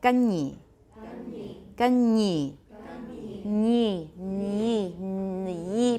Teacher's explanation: palatal sounds like nya, like you've got a y sound after it